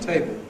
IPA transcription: ˈteɪbo